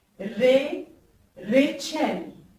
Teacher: Alors ici, on ne prononce pas ré, mais bien ré. Le R roulé comme on dit en français.